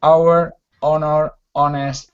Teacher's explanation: some examples of H's that are not pronounced at all. They're just silent.